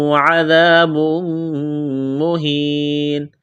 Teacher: میم مشدد ہے، آواز ناک میں چھپائیں گے، غنہ کریں گے